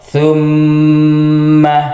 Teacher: Yang benar ditahan atau didengungkan sebanyak 2 harokat. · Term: gunnah musyaddadah